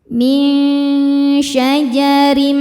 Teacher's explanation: Karena nun sukun bertemu dengan huruf syin. Cara bacanya nun disamarkan menuju syin ya disertai dengungan. Samar dan dengungannya sama besar. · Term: ikhfa hakiki ausat, ikhfa hakiki awsat